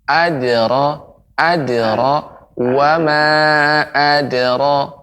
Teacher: Ya, kemudian pengucapan huruf dal masih perlu diperbaiki lagi, yaitu tidak boleh seperti ada huruf hamzah